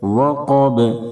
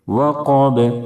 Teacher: اذا وقب، وقب، وقف کریں گے تو با ساکن ہو جائے گی، با چونکہ حروف قلقلہ کے 5 حرفوں میں سے ہے اس لیے با میں قلقلہ ہوگا، آواز لوٹ جائے گی